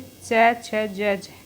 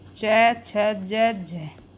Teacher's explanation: च छ ज झ, चारों वर्ण क्या? स्पर्श संघर्षी वर्ण है।